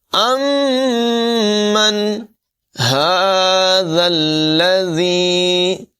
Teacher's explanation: میم مشدد میں ہمیشہ غنہ کر کے پڑھتے ہیں